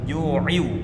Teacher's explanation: Ju'in bertemu waw, wa'a. Jadi bunyi tanwinnya dimasukkan ke waw, idgham bi gunnah.